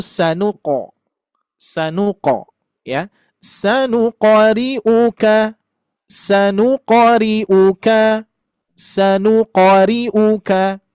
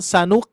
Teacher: Syiddahnya saja. Meskipun memang qalqalah itu ada syidah dulu, tapi uniknya huruf ini setelah syiddah baru memantul.